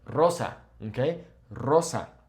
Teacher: quick rolling of the r there even though it's a singular